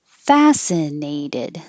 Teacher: the neigh gets a little longer because it's secondary stress and secondary stress gets longer but not higher